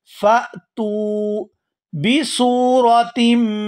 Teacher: ता को वाव साकिन के साथ मिलाते हुए खींच कर अदा करेंगे